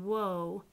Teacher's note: the w becomes very rounded you can watch your lips